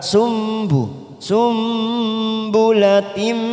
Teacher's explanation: Sumbu, sumbulatim ada kasrah tanwin pada huruf tak marbutoh bertemu dengan mim warna merah namanya bacaan idgham biguna, kita tekan 3 ketuk siap masuk pada huruf mim